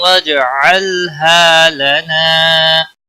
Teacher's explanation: قرة وجعلها لنا، جیم ساکن پر قلقلہ ہوگا، اللام کو ہلانا نہیں، ہا الف مدہ ہے، ایک الف کے برابر کھینچ کر پڑھیں گے۔ لنا الف مدہ ہے، ایک الف کے برابر کھینچ کر پڑھیں گے